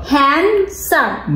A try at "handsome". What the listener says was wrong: No, duh. Where's the D? Hand. Some.